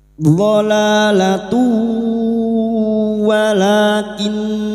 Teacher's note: La yang pertama ini dhalalatu, ya, la yang pertama 2 harokat kita panjangkan mad tabi'i, alif kecil di atas. Dhalalatu, dhamma tanwin bertemu wawu idgham bi gunnah, masuk dengan mendengung, masuk ke huruf wawu dan mendengung selama 3 harokat